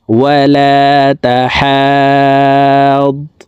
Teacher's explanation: চার আলিফ টেনে তাসদিদ ওয়ালা ضاد কে ধরব